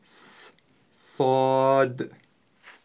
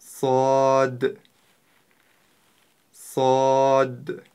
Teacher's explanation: буква сад относится к твёрдым буквам это одна из твёрдых букв арабского алфавита и ещё она свистящая